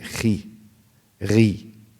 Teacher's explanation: Even if it's lighter when you pronounce it, it's never muraqqaqa. Even if you say khi, ghi, it's still مفخمة أدنى درجات التفخيم, the lowest levels of تفخيم.